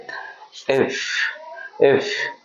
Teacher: উপরের দাঁত নিচের ঠোঁট একসাথে করে উচ্চারণ হবে এরকম ভাবে ইফ ইফ উপরের দাঁত নিচের ঠোঁট একসাথে করে উচ্চারণ